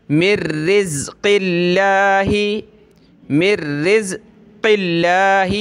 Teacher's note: لفظ اللہ سے پہلے بھی زیر ہے تو لفظ اللہ کو پتلا کر رہے ہیں